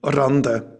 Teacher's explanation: when I speak German, my R quality is alveolar. So I would say Rande for beetroot.